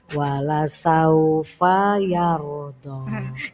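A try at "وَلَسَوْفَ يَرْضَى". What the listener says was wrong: Jenengan ini ngikuti lagu. Jadi fanya keseret. Wala saufa yardo. Wala saufa yardo gitu. Jadi gini, lagu yang ikut bacaan. Jangan bacaan yang ikut lagu. Rusak nanti kalau bacaannya ikut lagu.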